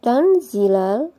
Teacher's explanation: sukun bertemu dengan Za ini bacaan Ikhfa kita baca dengan samar Nun sukunnya kita baca dengan samar disertai dengan dengung dan ditahan selama tig harakat pada waktu membaca Nun sukunnya bibir